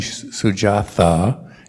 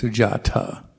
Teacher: there's no th sound like we have in english in pali